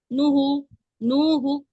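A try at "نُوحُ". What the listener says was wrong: थोड़ा खींचिए वाव मद्दा को।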